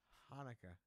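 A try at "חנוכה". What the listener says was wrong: No, it is Hanukkah, but it's a haf and not the chet. You know, the chet is more guttural.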